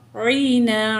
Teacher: अलिफ से पहले ज़बर है तो 2 काउंट खींचेंगे, अलिफ मद है